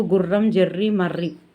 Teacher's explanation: గుర్రం జెర్రి మర్రి పదవులతో ర మూర్ధన్య కంపితం అవుతుంది